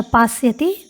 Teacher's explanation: पास्यति में सकार से पूर्व में आ है, अतः यहाँ पर सकार को मूर्धन्य आदेश नहीं हुआ है, अतः पास्यति दंत्य सकार ही सुनाई दे रहा है